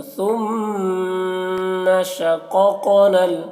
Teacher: دونوں قاف کو موٹا کر کے پڑھنا ہے اور یہ جزم والے قاف میں قلقلہ بھی کرنا ہے شققنا